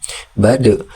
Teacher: huruf dal qalqalah di situ dibaca dipantulkan